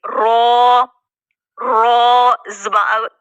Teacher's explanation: जुबान की पुष्ट से ताल्लुक है इसका और दांतों के मसूड़ों से अदा हो रहा है और मोटा भी करेंगे